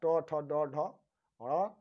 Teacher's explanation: मूर्धा से हम पूरा टवर्ग बोलते हैं